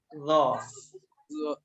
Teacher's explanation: ল ওই জিহ্বার আগা, সামনের দাঁতের আগা